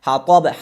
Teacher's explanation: حرف ح هم از وسط و از میان حلقه دا میشه. حطب حرف طا از جمله حروف استعلا هست، حروفای قوی هست، پر خوانده میشه و دوم مرتبه دوم درجه پر خوانده میشه. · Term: حرف حا